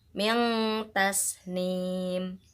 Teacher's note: Min ta ada nun sukun bertemu dengan huruf ta, maka cara bacanya adalah disamarkan